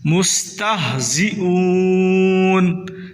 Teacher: ہا کو سینے سے نکالیں، یہ بھی حلق کے آخری حصہ سے ہا ادا ہوتی ہے